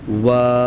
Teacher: वाव अदा होता है दोनों होठों की गोलाई से। दोनों होठों को गोल करके वाव अदा करेंगे।